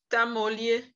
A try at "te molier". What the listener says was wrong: Non, pas ta, te. Te molier, ce n'est pas ta. Le A n'est pas E.